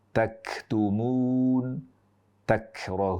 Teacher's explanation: Dan hamesnya kaf ketika bersukun itu lebih jelas dibandingkan dengan ketika berharakat.